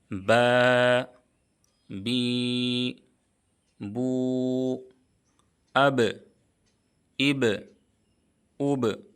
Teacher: बा का मखरज है दोनों होठों की तरी का हिस्सा और बा हरूफ कलकला में से है। · با کا مخرج ہے دونوں ہونٹوں کی تری کا حصہ، اور با حروف قلقلہ میں سے ہے، اس لیے با میں قلقلہ ہوگا۔